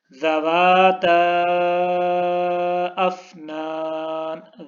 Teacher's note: ذَوَاتَا کے اوپر تا کو ہم نے لمبا کیا ہے کیونکہ اس کے اوپر مد ہے